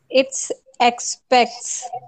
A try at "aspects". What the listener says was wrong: American उच्चारण क्यों कर रहे हो? ब्रिटिश उच्चारण कर लो. Aspects.